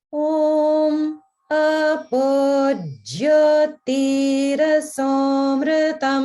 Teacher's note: There's no upper swara in the entire line. It's all down, and then there's sort of this just back and forth with the notes. So it's a little unusual.